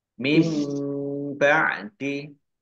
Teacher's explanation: nun sukun bertemu dengan huruf ba bacaan iklab dibaca membalik nunnya dibaca mim